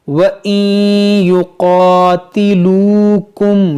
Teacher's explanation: پر ادغام کریں گے، وَإِن يُقَاتِلُوكُمْ، یہاں واو مدہ ہے، دیکھیے واو ساکن سے پہلے پیش ہے تو کھینچیں گے